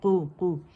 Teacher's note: قوف جو ہے یہ موٹا ہے، اس کے اوپر پیش ہے، تو کمپلیٹ رولنگ کریں گے ہم لپس کی۔ قوف کو مخرج سے پکڑ کر اسے ہم نے ضمہ دینا ہے، ٹھیک ہے۔